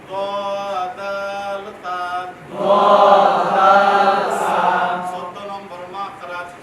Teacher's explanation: জিহ্বার আগা সামনের উপরে দুই দাঁতের আগার সঙ্গে লাগাইয়া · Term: 13 নম্বর মাখরাজ